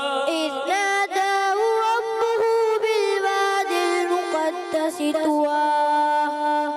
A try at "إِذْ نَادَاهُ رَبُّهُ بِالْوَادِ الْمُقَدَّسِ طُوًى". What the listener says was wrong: مقدس سین کی ادائیگی تھوڑا سا اور سٹی بھی اس کو ٹھیک ہے محنت کیجئے گا.